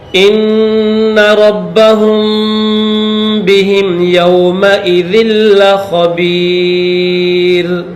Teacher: ربہم میم کے بعد اگر با آ جائے تو وہاں پر بھی غنہ کیا جاتا ہے، میم کو با کے ساتھ ملا کر پڑھیں گے اس طرح، ان ربہم بہم یومئذ لخبیر.